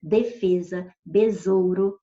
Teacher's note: certinhos com S e tem som de Z